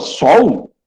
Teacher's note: Ele tem som de W, som de U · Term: semivogal